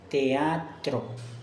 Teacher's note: La E y la A se separan: teatro. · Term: hiato